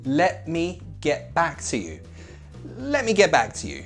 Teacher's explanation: we glottalized both of those T's because the T is at the end of a word